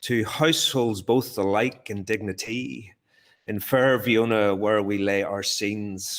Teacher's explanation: I'm going to try and do the da-dum, da-dum, da-dum rhythm. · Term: iambic pentameter